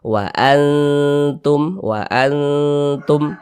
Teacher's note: huruf nun dengan huruf Ta ini dia dekat maka dikatakan aqrab cara membacanya dibaca samar dan berdengung kita baca Wa Antum Wa Antum nah disamarkan bunyi nunnya didengungkan · dipanjangkan sebentar, ditahan suaranya karena dia didengungkan. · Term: ikhfa Hakiki, ikhfa hakiki akrob